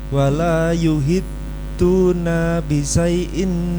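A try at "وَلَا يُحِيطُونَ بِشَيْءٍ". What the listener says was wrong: Kemudian di awal tadi yuhitu, harusnya yuhituna, panjang. Yuhituna. Silakan.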